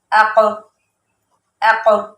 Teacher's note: اوق نہیں کہنا کیونکہ وہ پھر حمزہ نہیں ہوگا، وہ عین ہو جائے گا شمار